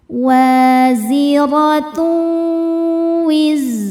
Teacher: Zinya berdesis ya. Ada sifat shofirnya. · Karena ada tanwin dommah menghadapi huruf wau. Cara bacanya tanwin lebur ke wau disertai dengung. · Zainya berdesis ya, ada sifat sofirnya. Wizra. Ro dibaca tafkhim karena berharokat fathah, maka dibacanya tebal. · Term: idgham bighunah